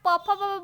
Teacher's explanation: प फ बोलिएगा तो ओट से बोला जाता है लेकिन म ओट से नहीं बोला जाता है इसलिए इसका राइट